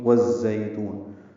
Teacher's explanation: واو ہونٹوں کی نا تمام گولائی سے ادا ہوگی اور اس کو زا سے ملانا ہے، زا تیز صفیر کی آواز سے پڑھنا ہے، زئی یا لین ہے، اس کو 1.5 حرکت لمبا کرتے ہیں۔